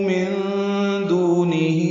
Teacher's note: نون ساکن کے بعد دال آنے کی وجہ سے اخفا ہوگا، نون کی آواز چھپائیں گے